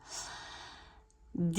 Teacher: nous allons bien faire les 2 temps avec la prolongation, la voyelle longue i